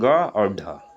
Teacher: उत्क्षिप्त व्यंजन उसे कहते हैं जिसको बोलने में जीभ को मुड़ना पड़े और मूर्धा तक ले जाना पड़े।